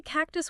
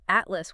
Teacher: Why do we say cactus with that aspirated T but atlas with a tight unreleased T?